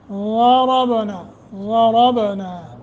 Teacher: ہوگا نون تنوین کے بعد ضاد، ضربنا، ضاد را کو موٹا، با ساکن ہے، قلقلہ کریں گے